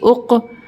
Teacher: कफ पे हरूफ खलकला का हर्फ है इसलिए यहां पे हमारी आवाज पलट कर आएगी